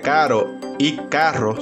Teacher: no existe el sonido vibrante de la doble r en muchas zonas por lo que caro y carro suenan igual